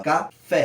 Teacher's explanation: em relação do K pro Fé, a gente tem uma ascendência pro Fé. Então o Fé é a sílaba tônica, a sílaba que se destaca.